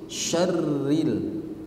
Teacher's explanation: Shinnya jelaskan dan ro-nya tipis.